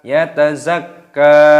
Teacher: kafnya dibaca panjang dan diidghamkan ataupun ditasdid karena ada tasdid di sini.